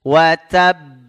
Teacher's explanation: jangan langsung pecah ya jangan langsung mantul ada tasdid ya tasdid itu satu huruf ya termasuk satu huruf yang harus